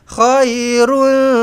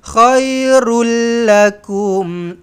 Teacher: tak payah dengung sebab masukkan dekat lam sabdu terus idgham bila ghunah